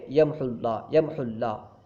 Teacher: حالانکہ وہاں پہ واو بھی ہے، واو کو ہم پڑھیں گے نہیں. یمحو اللہ ہے، جب ملا کے پڑھیں گے یمحو اللہ، یمحو اللہ، ایسا لگے گا گویا کہ ہاں پہ ضمہ ہے، اس کے بعد واو نہیں ہے، اس طرح پڑھیں گے یمحو اللہ. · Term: حذف